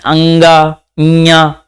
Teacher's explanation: अनुनासिक यानी की मुख का प्रयोग हो और नाक का प्रयोग हो